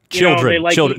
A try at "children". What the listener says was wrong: It's a low, like a not a long eye, a short eye.